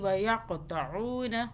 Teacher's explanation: قاف پہ قلقلہ کریں گے، قاف کو موٹا بھی پڑھیں گے، جھٹکا بھی دیں گے۔ قلقلہ کا حرف ہے۔